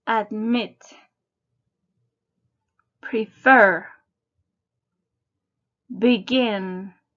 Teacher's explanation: the last consonant notice the second syllable is stressed